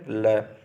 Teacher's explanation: निश्वास के समय जिह्वा के बगल से निकलने वाली व्यंजन ध्वनि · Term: पार्श्विक